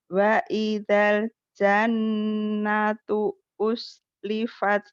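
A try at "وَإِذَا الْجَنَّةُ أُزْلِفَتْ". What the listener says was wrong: Wa idal jannatu jangan zai. Uzlifat. Wa idal jannatu uzlifat.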